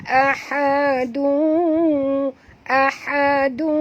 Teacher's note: Sebab tanwin bertemu dengan waw, bunyi dia dung ya.